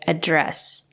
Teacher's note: If it's a verb, you have to say address. You have to stress the second syllable.